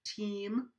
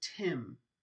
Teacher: lacks partner team versus tim those are two different words and the only distinction between those two vowels is the tenseness or the laxness